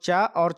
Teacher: तो चा और छा आ जाएंगे तालु के अंतर्गत।